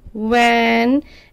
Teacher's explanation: the lower lip touches the upper teeth, and then you say this v sound